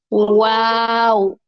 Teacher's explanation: اور واؤ، واؤ میں ہونٹوں کو گول نہ تمام ہم بند کرتے ہیں، واو، اس میں ہونٹ آپس میں ملتے نہیں ہیں بلکہ گول ہوتے ہیں،